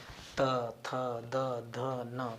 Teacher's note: इन दंत के पास को टच करेगी, दांत के समीप जाकर के टच करेगी। त थ द ध न प्रायः ऊपर वाले दांत में जाकर के जिह्वा हमारी टच करेगी। इसलिए दांत के संपर्क से इन वर्णों का जो है उच्चारण किया जाता है।